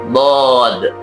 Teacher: Sedangkan menurut istilah adalah pengucapan huruf yang disertai memanjangnya suara dari awal sisi lidah sampai ke akhirnya. Ya, hafatul lisan sisi lidah. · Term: huruf Dod